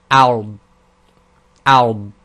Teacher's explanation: So you literally just say the hamza and then push the tongue onto the left side of the mouth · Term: dad